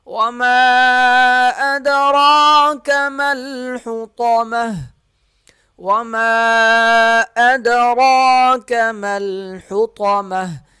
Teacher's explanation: میم پہ مد ہوگا 3 الف کے برابر، دال پہ قلقلہ کیا جائے گا، را کو موٹا پڑھیں گے اور 1 الف کے برابر کھینچ کر پڑھیں گے۔